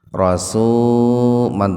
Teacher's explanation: jadi membacanya langsung dimasukkan ke ro lamnya diabaikan saja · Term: idgom Syamsi